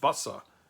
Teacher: Sometimes it was pronounced like a ts, especially in the beginning of a word, but very often it also represented simply an unvoiced sibilant, a s sound